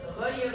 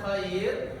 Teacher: Ghain itu sifatnya jahar, jelas, tidak banyak udara yang keluar.